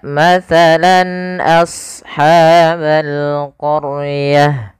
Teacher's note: suara lannya harus jelas dan tidak boleh didengungkan, tidak boleh ditahan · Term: izhar halqi